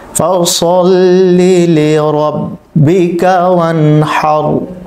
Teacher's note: এখানে রকে পোর করে পড়তে হবে, যেহেতু র সাকিন পূর্বে জবর এসেছে। সদ এটি মোটা শব্দ, এটাকে মোটা করে উচ্চারণ করতে হবে।